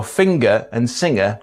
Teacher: there's a tendency for Yorkshire folk to be further along the path of NG coalesence so finger and singer don't rhyme